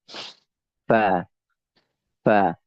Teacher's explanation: Fa itu ya perut bibir bagian bibir mengarah ke gigi seri atas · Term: huruf Fa